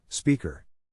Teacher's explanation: the accent is in the first syllable, corresponding to spe.